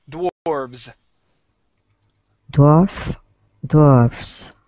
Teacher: dwarf with an F, and then dwarves with a V and a voiced S.